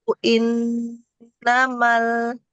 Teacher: panjangkan mad jaiz panjang saja lima ketukan